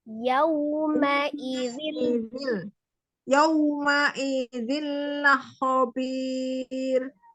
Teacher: wawnya dimonyongkan, ma-nya tidak jadi panjang. Yauma idzil.